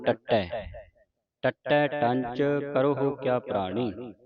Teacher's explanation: ਇਹਨੂੰ ਕਸ ਕੇ ਅਧਕ ਲਾ ਕੇ ਕਸ ਕੇ ਬੋਲਣਾ